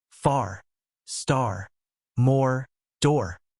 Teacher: In British English, we don't pronounce the R after vowels unless it's followed by another vowel.